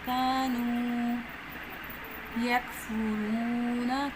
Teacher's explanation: الف مدہ ہے، ایک الف کے برابر لمبا کریں گے، کش والا کاف ہے تو بریک پڑھیں گے، واو مدہ ہے، اس کو بھی ایک الف کے برابر لمبا کرنا ہے، قَانُوا يَكْفُرُونَ، کش والا کاف بریک کر دیں گے، اور جہاں پہ واو مدہ ہے تو ایک الف کے برابر لمبا کریں گے، را کے اوپر زما ہے تو را بریک پڑھیں گے۔